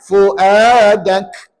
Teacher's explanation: Bukankah nak sebut kaf tu kita gunakan pangkal lidah. Pangkal lidah kita ditekan ke langit-langit. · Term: ismat